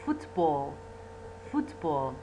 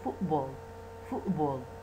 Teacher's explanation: إلى بدال ما يقولون football football شو يقولون يقولون football football فصوت الت يتحول إلى glottal stop فهذا أيضا realization another realization of the phoneme ت هو ت